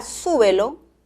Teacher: la palabra súbelo lleva el acento en la primera sílaba